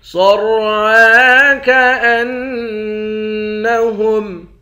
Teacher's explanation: صاد اور را دونوں کو موٹا پڑھیں گے۔